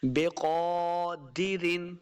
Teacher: قاف کے اوپر کھڑی زبر ہے، اس کو دو حرکات لمبا کرنا ہے اور قاف کو موٹا پڑھنا ہے